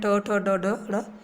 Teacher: जीभ, आपके जीवा का जो अग्रशिरा होता है वो नीचे से ऊपर की तरफ तालू को झटके से छू करके फिर वापस आ जाता है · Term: मूर्धन्य व्यंजन